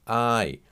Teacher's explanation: We're sliding from one vowel, A, to another vowel, Y.